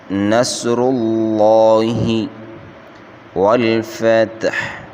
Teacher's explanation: صاد، را اور لفظ اللہ کا لام، ان تینوں کو موٹا پڑھیں گے۔ لفظ اللہ کے اوپر کھڑا زبر ہے، اس کو 1 الف یعنی 1 سیکنڈ کھینچ کر پڑھیں گے، باقی کسی حرف کو نہیں کھینچنا۔